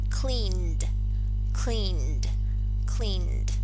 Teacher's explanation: we add the voiced alveolar plosive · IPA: /d/